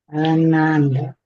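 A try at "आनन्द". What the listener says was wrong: Not Ananda. Ananda. So the colored lines again help us know that the very first syllable, which is just is pronounced long, nanda.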